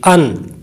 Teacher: حمزہ کے اوپر دو زبر کی تنوین پڑھی تو آواز پیدا ہوئی نون ساکن کی، ان۔ تو یہ جو ان ہے یہی نون ساکن ہے۔